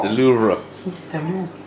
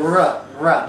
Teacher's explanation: You just barely put any of that R sound in there at all.